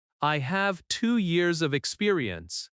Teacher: Stress have years experience. Let small words be softer.